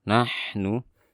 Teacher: Sukun ha sifatnya rokhawah, jadi dialirkan suaranya